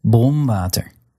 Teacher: N or M before an F or a V or a W sound will be made using your bottom lip against your upper teeth